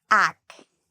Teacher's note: the AC actually has a K sound, and it's the part we say louder and longer. It's the stress. Ac. The second part, even though it's spelled with a TU, is pronounced like an SHU.